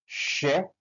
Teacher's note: Pada saat bunyi sh tidak ada getaran pada tenggorokan kita